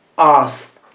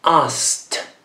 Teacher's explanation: La E non si pronuncia e la D si pronuncia come una T.